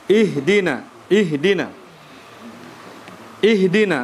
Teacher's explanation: huruf H itu adalah ya hurufnya rakhawah. Ya, sehingga di situ ada aliran suara ketika dimatikan.